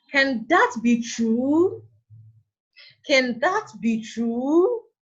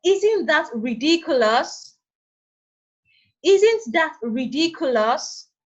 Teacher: Now, these are the uses of the rising tone. At the end of these sentences, the tone of our voice is raised.